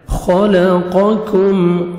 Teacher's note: قاف کو موٹا اور کاف کو باریک پڑھنا ہے